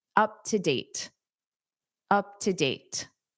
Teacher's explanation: Up to, up to, up to date, up to date. Now here, because date ends the sentence and you naturally take a pause anyway, you can pronounce that T